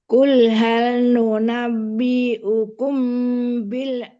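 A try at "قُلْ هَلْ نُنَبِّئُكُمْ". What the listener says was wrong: jangan diayun. Qul hal nunabbi'ukum, ditahan karena mimnya abaknya ada dua. Nunabbi'ukum. Nah, itu kan bak satu.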